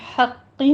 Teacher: حقی میں قوف کے پر تشدید ہے، سختی کیجیے اور کسرہ کی آواز باریک رکھتے ہوئے قوف کو آپ نے پر پڑھنا ہے کیونکہ حروف مستعلیہ میں سے ہے۔